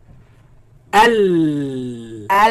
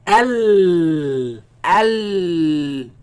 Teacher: The sound escapes on the sides. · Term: lam